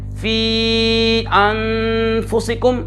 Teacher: मद मुत्तसिल और मुनफसिल को 2-2.5 अलिफ यानी 4 या 5 हरकत के बराबर खींचेंगे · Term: मद मुनफसिल